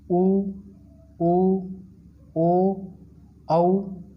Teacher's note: वे स्वर जिनके उच्चारण में ओष्ठ वृत्ताकार या गोल हो जाते हैं, यानी हमारे होठों का जो आकार है इन स्वरों का उच्चारण करते समय वृत्त के आकार जैसे या गोल हो जाते हैं, तो उन स्वरों को वृत्तमुखी या वृत्ताकार स्वर कहा जाता है।